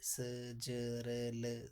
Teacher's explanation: ये आपका वतरस्य व्यंजन हो गया यानी कि दंत मूल से